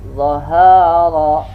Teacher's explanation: Dan dia al-hamas, ada mengeluarkan udara juga. Nah, kalau ra ini termasuk huruf lisan, makhrajnya huruf lisan nih, lidah itu melengkung ke langit-langit. Dan ra ini termasuk tawasud dia, pertengahan, tertahan dan tidak, pertengahan, rakhawah dan syiddah ya.